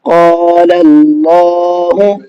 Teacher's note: یہاں لام پر زبر ہے، اس زبر کی وجہ سے ہم نے اللہ کے نام کو منہ بھر کے پڑھا ہے